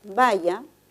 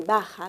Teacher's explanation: el cambio de significado se da entre el contraste de una lateral palatal con una fricativa velar